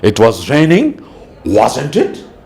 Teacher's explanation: Here I have raised the pitch now because I'm a bit less sure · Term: rising intonation